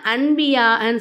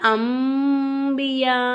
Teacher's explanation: நூனே சாக்கினையும் தன்வீனையும் மீமா மாத்தி நம்ம உச்சரிக்கணும் அப்ப இந்த இடத்துல அன்பியான்னு சொல்லாம அம்பியா அவ்வா அப்படின்னு சொல்லணும் இங்க அவ்வாங்கிற